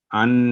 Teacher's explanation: نون ساکن پر آواز واضح کلیئر اور 1 سیکنڈ کی ہوگی. اس کو لمبا نہیں کریں گے، ان نہیں کریں گے، ان.